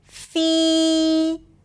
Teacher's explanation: And here's a quick tip about pronouncing the dark L after two particular sounds. If the dark L appears after a tense e sound as in feel, I want you to think as if you're adding a y sound right before.